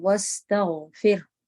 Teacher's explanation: تو سین اور غین دونوں میں آپ کو رخاوہ کرنا ہے، اور جہاں پر ٹائم برابر لینا ہے، واستغفر۔